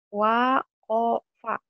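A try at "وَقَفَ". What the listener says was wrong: Tadi mau wa-nya nggak kedengeran wa. Wa kofa, wa enah, wa enot, wa nani.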